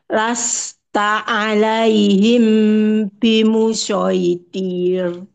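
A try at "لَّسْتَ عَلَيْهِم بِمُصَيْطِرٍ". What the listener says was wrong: Oke, pada huruf shad ya. Jadi huruf shad itu tidak pakai bibir. Ibu tadi bacanya masih sin tapi di-o-kan. Lasta alaihim bimusaitir. Bimusai. Beda ya. Bimusai ini sebenarnya sin. Sin. Kalau sad itu pangkal lidahnya naik. Lasta alaihim bimusa. Sa. Biarpun bentuk mulutnya tetap sama kayak huruf sin. Sa. Nah, jadi pangkal lidahnya naik.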